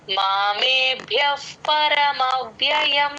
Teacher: చేసి చెప్పాలి పరమవ్యయం అలా ప్లేన్ గా కాకుండా పరమ మవ్వ అలా నీ పైన ఆ టీత్ వచ్చి కింద లిప్స్ మీద జాయిన్ అయితేనే ఆ వ కింద యవత్తు క్లియర్ గా వినిపిస్తుంది.